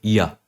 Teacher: ये अंतस्था व्यंजन जो होते हैं, ये स्वर और व्यंजन के बीच के कहीं हैं, तभी इनको इंग्लिश में सेमी वोवल कहते हैं।